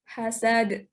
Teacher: Dal itu huruf qalqalah jadi harus mantul. Dan terletak di akhir ayat, jadi harus dipantulkan, pantulannya itu harus besar gitu.